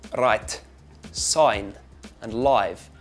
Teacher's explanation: the I sound in right sign and live it becomes more like an oi a bit like the O in oil and boy